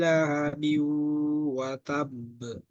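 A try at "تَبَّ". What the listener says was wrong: Terlalu cepat watab. Nah, tambah 1 detik lagi.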